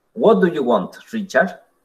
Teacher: En la primera parte vamos a tener el típico falling tone de una WH questions.